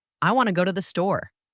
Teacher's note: The strong stressed words are want, go and store. The other words to, and the are weak and quick. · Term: stresstimed language